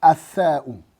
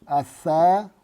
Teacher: la lettre S qui se lit au bout de la langue